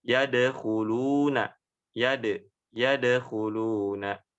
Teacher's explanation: yadkhuluna, dal yang berharokat sukun. Itu harus dipantulkan.